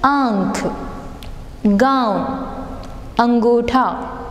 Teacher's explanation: अनुनासिक में क्या होता है? उच्चारण में मुंह और नाक दोनों से हवा निकलती है